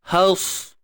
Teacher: Sad mati tebal, ta pun tebal.